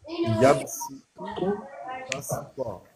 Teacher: بظاہر صاد ہے لیکن ان دونوں صاد کو سین کے ساتھ بدل کے پڑھیں گے